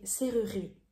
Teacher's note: you can hear I'm not pronouncing the second E.